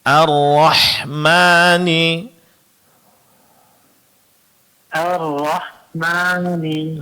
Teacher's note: Kemudian pengucapan huruf ha ini dari segi makhrajnya, Pak ya. Ingat huruf ha itu keluar dari tengah-tengah tenggorokan.